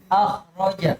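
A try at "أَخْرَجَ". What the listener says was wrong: Iya, jadi bukan akh roja tapi akh diarahkan ke o. Akh.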